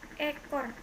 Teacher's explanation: Vokal E, kriterianya vokal depan sedang atas tak bundar semi tertutup